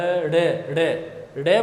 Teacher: जीभ है ये थोड़ी ऊपर उठेगी और झटके से गिरेगी यानी हम जब अड़ बोलते हैं तो जीभ से उठाकर पटते हैं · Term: उत्क्षिप्त